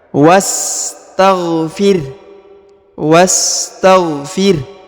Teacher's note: rabbika was huruf wa langsung ke huruf sa yang berharakat sukun ini adalah Hamzah wasal atau Hamzah penyambung maka tidak dibaca ya dilewatkan saja